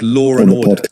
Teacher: The intrusive R on the other hand appears even when there's no R in spelling. It happens between a word ending in a vowel sound and a word starting with a vowel sound like law and order.